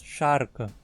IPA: ʃarkə